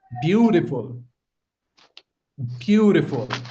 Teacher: The the stress is on the first syllable.